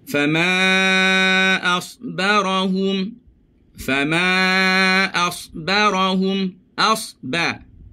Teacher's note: Tebalkan sad, nipiskan ba.